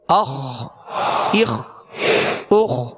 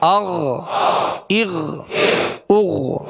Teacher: یہ خا اور غین کا ایک ہی مخرج ہے، لہذا ادا کرتے ہوئے اس بات کا خیال رکھیے گا کہ خا غین نہ بنے اور غین کی آواز کے میں خا کی آواز پیدا نہ ہو۔